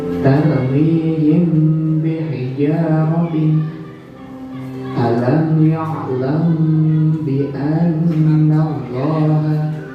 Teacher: Ada mim sukun bertemu ba, kita baca ikhfa syafawi atau samar.